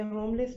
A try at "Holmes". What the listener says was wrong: Holmes. Holmes. L is silent.